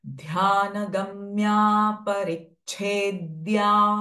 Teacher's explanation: छ sound here is महाप्राण sound ध इज महाप्राण sound ध्यान गम्या परिच्छेद्या एंड दिस आर कंजम